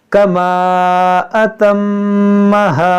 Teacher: मीम में गुन्ना करेंगे क्योंकि मुशद्दद है.